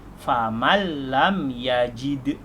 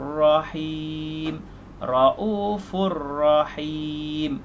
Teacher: idgham bila gunnah itu masuk tanpa dengung, huruf dia ada dua, lam dengan ra. Cara baca faman lam yajid menjadi famal lam yajid.